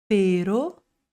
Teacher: No espanhol a gente tem mais curtinho, só um toquinho na língua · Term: ere